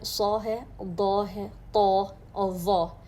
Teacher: 4 حروف مسلسل ان میں تفخیم کا جو درجہ ہے سب سے زیادہ بلند ہوتا ہے